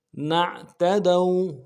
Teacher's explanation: نعتدوا میں تا کو نرم سے ادا کرنا ہے, دال کو واو کے ساتھ ملانا ہے, واو لین ہے, بغیر کھینچے پڑھیں گے